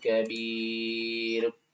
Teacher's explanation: دو پیش ختم را کو ساکن کریں گے